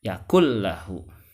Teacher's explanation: Hut tidak karena apabila nun sukun bertemu dengan huruf lam makanun sukunnya dimasukkan ke huruf lam tidak ditahan